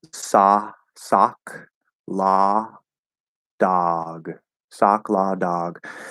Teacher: generally speaking, it's a cot merger, same sound.